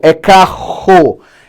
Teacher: É um R que a gente chama de R gutural, que vem aqui, ó, ele mexe com a nossa garganta, né?